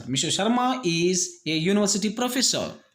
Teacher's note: Obviously it is vowel letter, but the sounds, the pronunciation starts with ya, you.